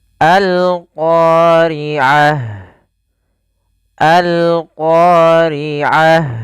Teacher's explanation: alif lam yang kita tuliskan dan kita baca suara lamnya dengan jelas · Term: alif lam qamariyah